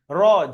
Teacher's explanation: জিভের আগার উল্টো পিঠ তার বরাবর উপরের তালুতে লেগে উচ্চারিত হবে